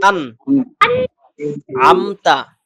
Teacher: তাহলে নুন সাকিনের পরে আসছে আইন, আইন হলো ইজহারের হরফ, ইজহার মানে স্পষ্ট করা। তাহলে আমতা, আন এভাবে বলা যাবে না, আন আমতা এভাবে বলতে হবে।